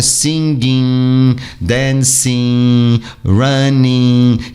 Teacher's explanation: é um som nasal já o ing muda totalmente de figura o g não é pronunciado se você pronunciar É passável mas você nunca ouvirá ele sendo pronunciado principalmente no gerúndio dos verbos e a língua fica livre